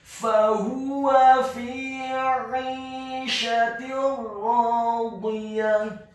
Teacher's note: huruf ain-nya ditekankan keluar dan tenggorokan bagian tengah kasrah 2 harokat karena setelahnya ada huruf ya sukun.